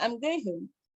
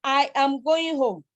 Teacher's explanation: The argument now is that the Nigerian English speakers uses stress time, syllable timing rather than stress timing to speak. So you tend to have every single syllable stressed. So you have something like, instead I'm going home, you now have I am going home.